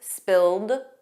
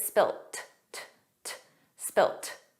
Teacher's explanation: In American English, it's always spilled, a soft D, but in British English, it's spilt. Spilt. So you might hear spilled, you might hear spilt, but those final sounds aren't pronounced fully in spoken English in both British and American English.